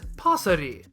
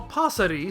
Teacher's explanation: doesn't feel the need to use that extended “aa” sound. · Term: rhotic “r”